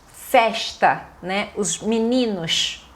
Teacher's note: é do Rio de Janeiro e uma característica forte é o S chiado. Então ela fala festa, né?